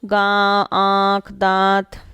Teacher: अनुस्वार नाक से, अनुनासिक नाक और मुंह दोनों से बोला जाता है।